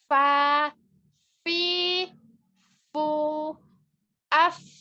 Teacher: Nah, fa ini memiliki sifat hamas. Jadi nafasnya mengalir.